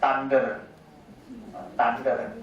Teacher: voiceless dental fricative will be pronounced as voiceless alveolar stop